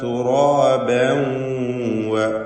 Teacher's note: തൻവീനും ശേഷം വാവും ഇദ്ഗാം ബിഗുന്ന നാഖിസ് നൽകി തൻവീനിനെ വാവിൽ ലയിപ്പിച്ച് പഠിക്കണം.